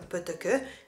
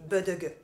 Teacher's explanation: les sons non voisés, comme « peut-que », véhiculent plus l'idée de petitesse que les sons voisés « bedegue »